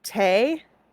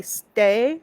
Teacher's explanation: different type of T sound if you say stay versus T there's a little puff of air for the second one but not for the first